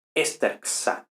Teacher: los verbos acabados en oclusiva velar tienen el esperado resultado xi, que al fin y al cabo es ks, es decir, la velar y la sigma del sufijo sigmático